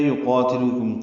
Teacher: یقاتلوکم قاف پور الف مدہ ہے، دو حرکات لمبا کریں گے